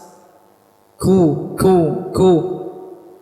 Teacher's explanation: samarnya suara pada sebuah huruf dan tidak bergetarnya pita suara kemudian mararinnya banyak dari udara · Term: huruf Kaf